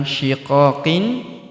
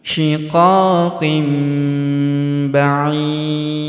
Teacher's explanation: Kemudian tanwin in huruf qin bertemu huruf ba maka tanwin inn-nya menghilang karena melebur ke huruf ba. Kita tahan dan kita dengungkan 2 sampai 3 harakat. Tanwinnya berubah menjadi mim.